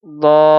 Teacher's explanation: حروف مدہ کے بعد والے حرف پر اگر جزم یا تشدید ہو تو دیکھیے حروف مدہ ہے، الف ہے، اور حروف مدہ الف ہے، اس کے بعد والے پر کیا تشدید ہے تو یہاں پہ مد لازم کریں گے۔ 5 الف کے برابر کھینچ کر اس کو ہم پڑھیں گے